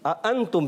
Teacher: अंतुम प्यारे बच्चों, 2 हमजा है, दोनों हमजा को खूब वाज़े करना है। दोनों हमजा में नरमी नहीं होनी चाहिए, तहकीक के साथ खूब जाहिर करके पढ़ेंगे।